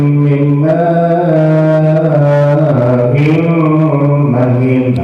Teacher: Dan mati ketemu mim. Hilang bunyi nun, dimasukkan bunyi mim. Itu hukumnya idgham bilghunna.